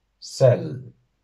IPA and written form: 'sɛlː (sell)